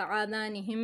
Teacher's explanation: आज़ानिहिम, आ खड़ा ज़बर है, इसको भी खींचेंगे थोड़ा सा। आज़ानिहिम, यहाँ पे मीम मुशद्दद है, गुन्ना करेंगे